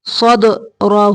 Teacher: یشرح صدرہ دال کو قلقلہ کرنا ہے